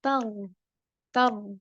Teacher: Kalau ro sukun sebelumnya ada huruf yang berharokat fathah, maka bacaannya tafkhim, tebal.